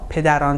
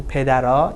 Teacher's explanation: in spoken Persian, on changes to a